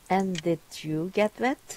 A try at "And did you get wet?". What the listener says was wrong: That's it. Excellent. Well done.